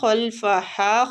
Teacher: خا مستعلیہ حروف ہے، پور پڑھیں گے